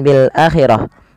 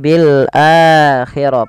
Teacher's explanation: di sini adanya mad thii Ya bukan Bil akhirah tapi bilakhir panjangkan huruf a sepanjang dua harakat karena i mad badal kapan terjad mad badal mad badal terjadi · Panjangkan huruf a sepanjang 2 harakat karena ia mad badal.